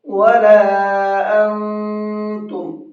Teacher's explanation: نون کی آواز کو تھوڑا سا ناک میں چھپا کر کے پڑھتے ہیں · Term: نون ساکن